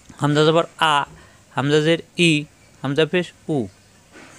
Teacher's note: হামজা কন্ঠ শুরু থেকে উচ্চারণ